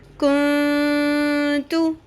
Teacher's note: نون ساکن کی آواز کو اور تنوین کی آواز کو چھپانا ہے، اخفا کرنا ہے اور وہاں پر غنہ بھی کرنا ہے، یعنی اس کو لمبا بھی کرنا ہے، ناک کی آواز میں ٹھہرانا بھی ہے